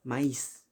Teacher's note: porque tiene la intensidad en la I y por eso se independiza, se separa. Adquiere un carácter de vocal abierta.